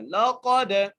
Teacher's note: قاف کو دال سے ملانا ہے اور دال پر قلقلہ کرنا ہے